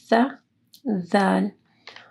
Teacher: آپ کی زبان کی نوک اوپر کے دو دانتوں کے پاس لے کے آنی ہے، سا، دال۔